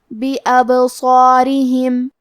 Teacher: ہمیں با کو قلقلہ سے پڑھنا ہے، اور قلقلہ کا معنی ہے حرف ساکن کو ہلانا. تو ہم با کو ہلاتے ہوئے یہ کلمہ کو پڑھیں گے.